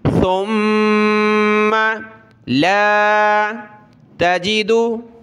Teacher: ثم سا پر زبان نکالیں، میم پر غنہ کرنا ہے